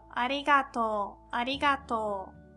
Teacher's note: That's to and u at the end, but because of o, u sound, we pronounce like long o sound.